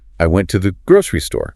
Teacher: grocery often retains the stress over store because it's the more specific defining detail.